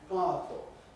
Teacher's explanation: You’re going from [a] to [ə], from the [a] vowel to a schwa [ə] without that [ʊ] vowel in between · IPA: [ˈpaəfl̩]